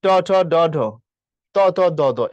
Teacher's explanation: দাঁতের পিছনে উচ্চারিত হচ্ছে ট ঠ ড ঢ